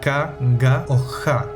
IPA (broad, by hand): ka ga o xa